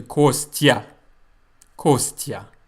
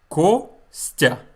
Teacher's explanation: The consonant plus the letter ya results in the sound tya, or bya, or ся, or vya, etc. In my name, it's tya. The y sound is gone. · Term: tya sound